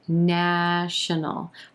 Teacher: three syllables here emphasis on the first syllable and the ah as in black vowel sound